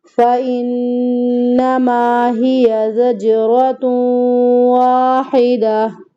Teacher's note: ہیا دونوں متحرک ہیں، کسی کو بھی ہمیں لمبا نہیں کرنا